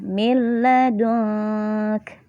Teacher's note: nunnya juga tidak dibaca, langsung melebur ke huruf lamnya, tapi tidak disertai gunnah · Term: idgham bila gunnah